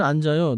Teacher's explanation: In English, in 앉아요, the 지읒 sound links into 아요.